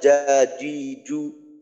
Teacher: জিম হলো জিহ্বার মধ্যখানের একটু সামনের দিক, জিহ্বার মাঝের সীমানায় কিন্তু একটু সামনের দিকে।